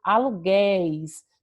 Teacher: perceba que és, o som, o timbre da nossa voz, ele é um timbre aberto. Por isso que a acentuação que a palavra aluguéis recebe é no é.